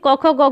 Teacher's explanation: क वर्ग को कंठ से उसका उच्चारण होता है